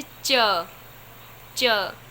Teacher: आगे लेंगे तालु वाली लाइन, तो जैसे च, च, तो हमारी जीभ जो है तालु से स्पर्श हो रही है